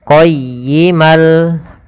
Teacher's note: Setiap ada an in un atau tanwin nun mati atau tanwin bertemu dengan lam yang biasanya ada tasdidnya, ini ditandai warna oranye, itu hukum bacaannya yaitu idgham bila gunnah. Maka caranya adalah bukan lagi dibaca qayyiman liyu, tapi langsung masuk kepada huruf lamnya.